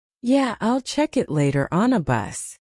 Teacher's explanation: Fast version, yeah, I'll check it later on a bus. On the becomes Anna.